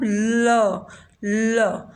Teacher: तो दोनों साइड से हमारी जो है टंग के दोनों साइड से, बोथ साइड से हमारी एयर एस्केप होती है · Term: लिटरल कॉन्सोनेंट